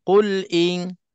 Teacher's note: Lam mati di sini kita nak kena zahirkan mati lam tu. Sukunul lam tu kita nak kena izharkan.